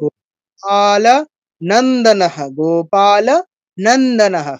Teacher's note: গোপাল, পাটা দীর্ঘ, আকার আছে, তাড়াতাড়ি বলা যাবে না। গোপাল নন্দনহ, গোপাল নন্দনহ, স্পষ্ট করে বলতে হবে প্রত্যেকটা অক্ষর।